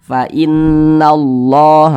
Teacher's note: lafaz Allahnya kita baca tebal, kita baca tabkhim karena di lafaz Allah sebelumnya ada huruf yang memiliki tanda baca fathah. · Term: dibaca tabkhim